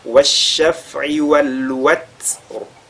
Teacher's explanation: Elle doit être lue avec le Waw, Watr, et le Ra qui est lu avec At-Tafrim ensuite.